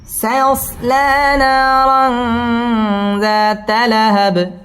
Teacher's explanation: তানবিনের বামে জাল আসছে জাল ইকফার হরফ গুন্না সহ পড়তে হবে